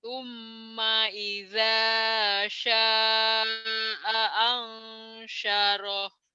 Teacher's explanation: Shinnya gede, shinnya anginnya besar.